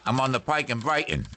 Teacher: that speaker was also employing the glottal stop which occurs by obstructing airflow in the glottis